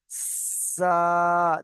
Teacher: জিভের আগা এবং সামনের, উপরের এবং নিচের 2 দাঁতের আগার সাথে লাগিয়ে উচ্চারিত হয়